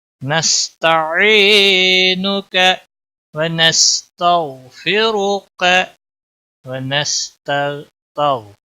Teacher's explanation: रा के ऊपर पेश है इसलिए मोटा पढ़ा जाएगा, का को खींचना नहीं।